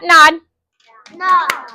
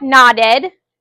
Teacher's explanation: Two syllables. Now, when we add the word ed, since both our sounds are voiced, we're adding a whole extra syllable.